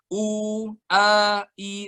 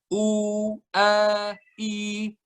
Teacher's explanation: dan nggak boleh sama sekali masuk hidung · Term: jauh